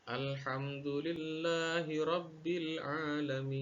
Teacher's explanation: ketika dia diwaqafkan, maka panjangnya pun menjadi 5 atau 6 harakat lagi